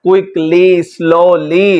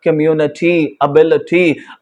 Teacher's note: अगर आपका लफ्ज वाई पर खत्म हो रहा है तो वाई को आप प्रोनाउंस करेंगे लॉन्ग ई की सूरत में